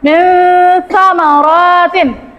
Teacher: Dibaca samar. Samar-samar dengan dengung. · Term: ikhfa